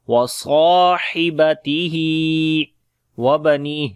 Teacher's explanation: So we say wa abi wa ummihi wa abi wa sahibatihi wa bani wa sahibatihi wa bani wa swad and alif we long due to alif. Swad and alif we read in heavy sound, and ha we long due to standing kasra.